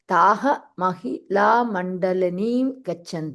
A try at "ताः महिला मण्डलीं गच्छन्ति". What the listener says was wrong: Mandalim, not mandalini, mandal.